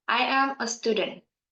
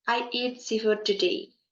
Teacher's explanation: you can hear that in the end of the sentence the tone is dropped